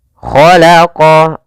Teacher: kha isti'la, huruf isti'la yaitu pangkal yang terangkat